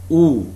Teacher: you will find that your lips are rounded